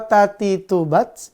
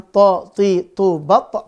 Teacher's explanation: ta dia tipis dan berhembus tho dia tebal dan napas tertahan